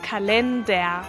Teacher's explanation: la R al final suena como una A.